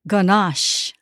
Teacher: Adaan stressan second syllable, ganache